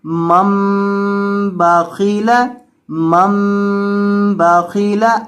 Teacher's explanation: یہ جو میم چھوٹی میم لکھی ہے یہاں، یا اس کو نون ساکن کہہ لیں، یہاں نون ساکن تو چونکہ ہم نے پڑھنا نہیں ہے، اس کو میم پڑھنا ہے، تو یہاں آپ نے میم کے اوپر گنہ کر کے پڑھنا ہے